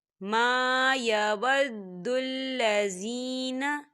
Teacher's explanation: ما خالی الف سے پہلے زبر ہے تو یہاں پر الف مدہ ہو رہا ہے، تو اسے دو حرکت کے برابر کھینچیں گے